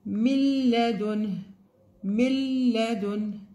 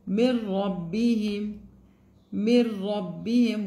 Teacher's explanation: We have for لام and را, it will be without the nasal sound, without غنة.